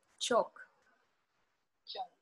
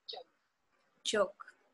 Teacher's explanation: The ch is voiceless. J is voiced.